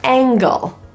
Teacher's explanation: instead of using the tip of your tongue for the n g we now end up using more of the back of the tongue · tongue anticipates that movement the result of anticipating that is that the N begins to be produced a little bit further back because it's easier to transition to that g · we use a process called anticipatory assimilation this just means that we anticipate that the back of our tongue will eventually need to go up for that g sound so the tongue anticipates that movement the result of anticipating that